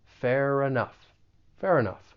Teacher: We can link the final consonant sound in fair with the beginning vowel sound in enough. Fair enough. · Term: linking